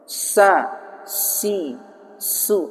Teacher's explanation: Makhrajnya di mana? Ujung lidah bertemu dengan ujung gigi seri bawah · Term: huruf sin